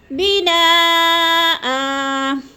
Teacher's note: وقف کی صورت میں 2 زبر کی تنوین جو ہوتی ہے اس کو 1 زبر میں بدل کر پڑھتے ہیں